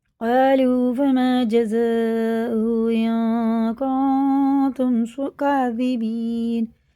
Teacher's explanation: قالوا فما جزاؤه إن كنتم كاذبين، یہ بھی نون ساکن کے بعد کاف آ رہا ہے، نون ساکن کے بعد تا آ رہا ہے، یہ حرف اخفا میں سے، یہ غنہ اور اخفا کر کے پڑھنا ہے، ان نون کو ہم ناک میں چھپا کر 1 الف کے برابر کھینچ کے پڑھیں گے۔